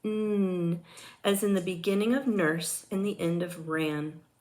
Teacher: N is a voiced alveolar nasal consonant.